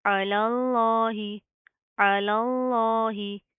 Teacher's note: पहला लाम बारीक और लफ्ज़ अल्लाह का लाम मोटा